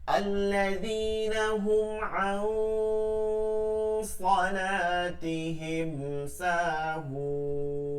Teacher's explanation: সাহুন মাদ্দে আরজি তিন আলিফ টেনে পড়তে হবে।